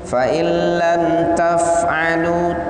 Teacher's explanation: Suara nunnya dimasukkan ke dalam lam tapi tidak ada dengung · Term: idgham bila gunnah